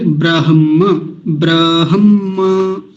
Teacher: ब्रह और म बाद में बोला जाता है